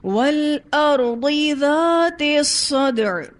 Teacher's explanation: عمومی طور پر ذال کو بھی سخت کر دیتے ہیں، تو یہ ذال سخت نہیں ہے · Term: ذال نرم